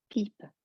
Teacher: P comme pipe, less air in the English. No big P. You don't want to be popping your lips. Very gentle, soft P.